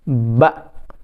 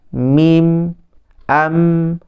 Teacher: Syiddah ni kuat. Maka bila sebut huruf ba, mulut tu rapat dengan kuat. Ba. Manakala mim bersifat tawassut. Tawassut ni dia pertengahan. Maka bila dia sebut mim tu, dia letak dengan ringan. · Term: sifat syiddah